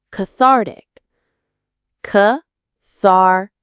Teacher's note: Cathartic. Stress on the second syllable.